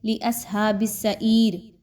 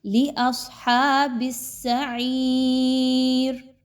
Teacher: آگے چلیے تو لِأَصْحَابِ السَّعِيرِ، اب بہت سے لوگ اس کو پڑھتے ہیں لِأَصْحَابِ السَّعِيرِ، تو ایک تو صاد کے مخرج کو خراب کرتے ہیں اور دوسرا عین کے مخرج کو۔ یاد رکھیے صاد کو بہت موٹا کر کے پڑھنا ہے، ہا کو نرمی کے ساتھ حلق کے درمیانی حصے سے نکالیے اور عین کو بہت اچھے سے پڑھیے۔